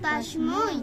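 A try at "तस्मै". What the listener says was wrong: এই উচ্চারণটা একটু ক্লিয়ার করতে হবে যেহেতু ঐকার আছে, হ্যাঁ, তস্মৈ।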